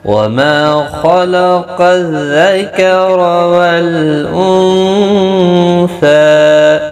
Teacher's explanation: خا اور قاف دونوں کو پر پڑھا جائے گا، حروف مستعلیہ میں سے ہیں. را بھی زبر کی وجہ سے پر پڑھا جائے گا.